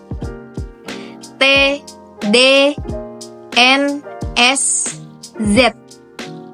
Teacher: Selanjutnya ada alveolar. Hambatan terjadi di lidah dan gusi.